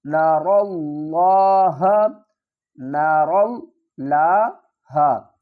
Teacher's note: را کو ہم پر پڑھیں گے اور لفظ اللہ کے ساتھ ملائیں گے اور لفظ اللہ کے لام کو بھی پر پڑھیں گے۔